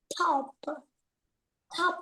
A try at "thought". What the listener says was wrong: Fought. Fought, thought. Fought, thought. No, not p. This is the th. Th. Fought, thought.